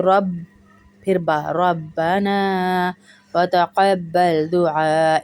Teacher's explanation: با پہ دو آوازیں آئیں گی، ایک کلکلے کی آواز آئے گی، تشدید کی وجہ سے آواز آئے گی